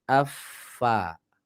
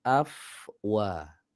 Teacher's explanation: yang benar itu bibirnya dimajukan setelah huruf Fa